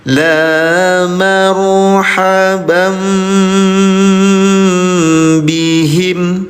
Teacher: Cara bacanya samar dengungkan tahan dua harakat dirubah jadi mim ya. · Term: Iqlab